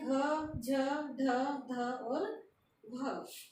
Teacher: वे जो घोष हैं, स्पर्शी हैं और महाप्राण हैं